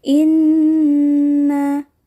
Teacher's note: terdapat hukum bacaan ghunnah pada bacaan Inna bacanya ditekan sedikit